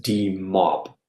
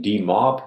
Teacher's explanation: Yeah, so in demob, that's from demobilization. There, the stress is on the second syllable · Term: non-initial stress